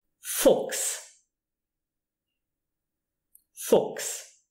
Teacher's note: When you have that CH appearing in the word and it is followed by an S, you pronounce it K.